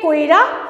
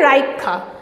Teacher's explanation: যেখানে রয়ের পরে হর্ষইকারটা উচ্চারণ করার কথা ছিল সেখানে রয়ের আগেই হর্ষইকারটা উচ্চারিত হচ্ছে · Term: অপিনিহিতি